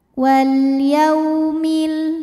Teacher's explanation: huruf Lin sebab ada wau sukun didahului baris fathah maka cara bacanya dilembutkan